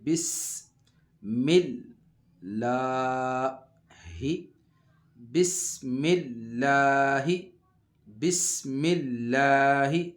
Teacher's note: یہاں لفظ اللہ کا لام باریک رہے گا کیونکہ اس کے پیچھے میم کے نیچے جو ہے وہ زیر ہے · سین میں سیٹی کی آواز آئے گی